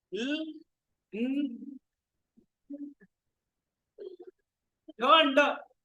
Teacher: Like ta, da, and na, the tongue touches the alveolar ridge. So, there is there is closure, but it is not complete closure. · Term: alveolars